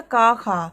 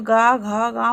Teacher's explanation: इनको बोलते समय ध्वनि सीधी निकल रही है, और इसके अपोजिट घोष में तो गा घा गा बोलते हैं तो ध्वनि जो है गले के अंदर से निकलती है।